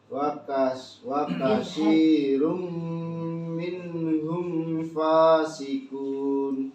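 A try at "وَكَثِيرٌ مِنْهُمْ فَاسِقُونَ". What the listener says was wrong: Bagus, ada peningkatan mim ketemu fa-nya gak bagi gigi ya mim.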